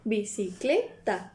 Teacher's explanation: de que tiene más fuerza de pronunciación dentro de la palabra la fuerza viene de la tercera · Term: sílaba tónica